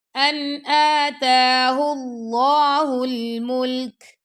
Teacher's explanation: ان نون ساکن کے بعد آ گیا حمزہ تو یہاں پہ ہم کریں گے اظہار